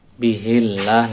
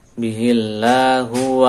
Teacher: Bihillah lafzul jalal dibaca tipis bihillah didhalil kasrah